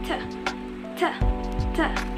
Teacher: Ujung lidah menyentuh alveolar ridge, kemudian udaranya stop di dalam, berhenti total, dan terjadi letupan dan menghasilkan bunyi t. · Yang pertama dimulai dari articulator, yaitu ujung lidah yang menyentuh bagian alveolar ridge. Kemudian udara yang di dalam itu berhenti total atau yang dinamakan dengan stop. Dan setelah keluar itu menghasilkan letupan, kemudian menghasilkan bunyi t, t, t.